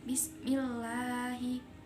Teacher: bacaan tarkik sebab lafadz Allah didahului harokat kasroh. Tarkik artinya tipis.